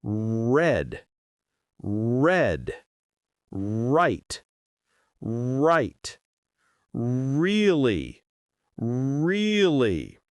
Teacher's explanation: In many languages, R sounds different. In English, your tongue goes back. It doesn't touch anything.